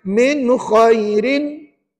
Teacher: Dan kalau tengok dalam nota Ustaz, nun mati dan tanwin, kalau jumpa dengan huruf kha di situ, maka hukumnya mesti izhar halqi. Dan dibaca nyata terang jelas tanpa dengung.